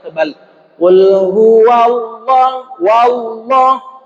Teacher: bukan wa wa tetap dengan sifat aslinya tipis Jadi bagaimana bacanya berikan hakwa yang tipis dulu kemudian masuk ke dalam lam jalalah yang tebal